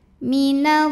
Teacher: alif lam menghadapi huruf Syamsiah yaitu lam alif lam tidak dibaca minallii muqadar karena ada baris fathah panjang di atas huruf lam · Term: alif lam syamsiah